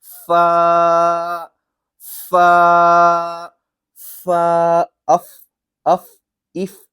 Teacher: پھا دونوں ہونٹ نہیں جڑانے ہیں، بلکہ آگے کے جو اوپر والے دانت ہیں نا وہ، اور نیچے کے جو ہونٹ ہیں ان کا جو تری والا حصہ ہے اس پہ آپ نے لگانا ہے ، جیسے کہ فا، فا، فا، اف، اف، اف، یہ سمجھ